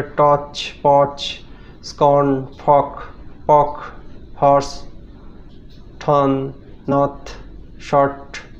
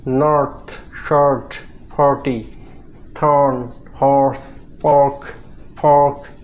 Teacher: OR sound, যেটা ব্রিটিশরা অ উচ্চারণ করে আর আমেরিকানরা র উচ্চারণ করে, র র, জিভটা পেছন দিকে নিয়ে গিয়ে র এরকম উচ্চারণ করে।